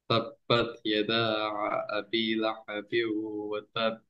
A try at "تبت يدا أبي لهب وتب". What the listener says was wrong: গলায় প্রেশার নিয়ে পড়বা না, একদম গলা ছেড়ে পড়বা, হ্যাঁ?